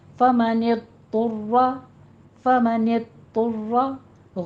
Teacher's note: فمن اضطر، ند نہیں کہنا، فمن ند، یہ آپ کی زبان کی کروٹ اوپر سٹاپ ہو جائے گی۔ طر میں طا بھی پر ہے، را بھی پر ہے، را کی پر تشدید ہے